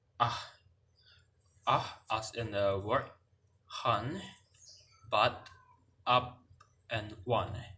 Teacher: The vowel is ah, as in the word han, but, up, and one. It is formed with unrounded lips, and it is short, and then it is a low central unrounded vowel.